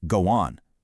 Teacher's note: Intrusion is adding an extra sound, like slipping a w sound between go on so it sounds like go on.